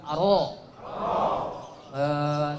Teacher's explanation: Huruf R kita banyak getarannya. Ro-nya orang Arab itu tidak banyak getarannya. Ujung lidah kita itu di langit-langit kita.